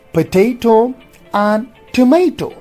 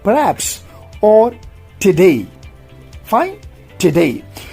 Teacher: Loss of weak vowel after p, t and k in words like potato, tomato, canary, perhaps and today.